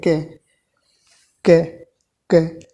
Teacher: बाद में कै में ए की साउंड आ रही है। यदि आप इसमें इस कै में ए की साउंड ना लाए, ठीक है, इसका उच्चारण नहीं हो सकता।